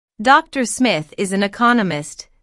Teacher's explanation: notice the stress on Economist this content word has new information so it is emphasized